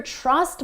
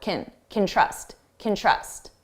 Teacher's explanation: you hear trust more because it's the main verb and can, which sounds like kin, is very short